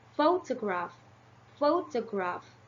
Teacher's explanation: the primary stress is on the first syllable and the secondary stress is on the third syllables